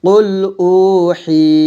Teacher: হি এক লিপ পরিমাণ টান দিয়ে পড়ব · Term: মাদ